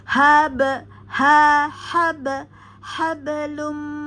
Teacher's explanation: pada ba sukun di tengah maka terjadi ya pantulan tipis di tengah kata